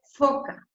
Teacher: Es fricativo. Es labio dental porque utilizo, si se fijan, para hacer ese sonido, utilizo los labios y también utilizo los dientes.